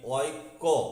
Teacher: এই কয়ে জফলার পূর্ণ উচ্চারণ অ দিয়েই হচ্ছে